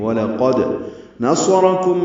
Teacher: واو ہونٹوں کی نا تمام گلائی سے ادا کریں گے، لام باریک پڑھیں گے، قاف پر پڑھیں گے، دال ساکن پہ قلقلہ کریں گے. وَلَقَدْ نَصَرَكُم میں صاد را دونوں پر ہیں، کاف باریک ہے